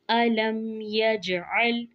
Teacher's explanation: यजअल में जीम पर कलकला करेंगे, आइन को वाज़िया करते हुए लाम पर आवाज़ रुक जाएगी।